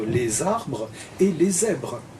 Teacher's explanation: on entend bien un son, une sifflante sonore